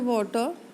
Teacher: For the T in the water, the tongue tip is thrown in a ballistic motion and only grazes the alveolar ridge in passing. This kind of a very fast T is called a tap.